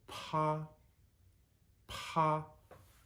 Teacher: we need to add more breath over the top of the P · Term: chicken tender breath